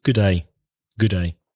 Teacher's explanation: if you say that in a normal British accent, you'd probably just use one D. So good day.